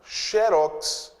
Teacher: Xerox é oxítona terminada em X. A sílaba tônica é a última.